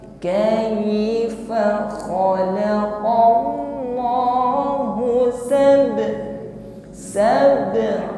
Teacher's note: benar-benar bunyi yang keluar ini i, jangan miring kepada kai.